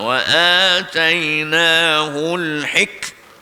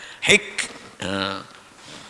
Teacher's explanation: Mati dengan keadaan syiddah, kejap, kemas angin dia. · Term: huruf hamas